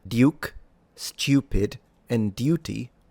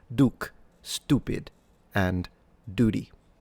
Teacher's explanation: Think about it in British English specifically received pronunciation the words duke stupid and duty do have the y sound or y sound in between the consonant and the vowel. But in American English this is usually dropped.